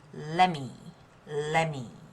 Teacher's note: the T sound is assimilated to the next sound M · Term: assimilation